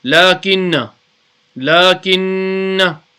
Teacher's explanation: So you do gunna on the noon mushaddad. Lakinna. That's it when you are reading in wasal, when you are continuously reading.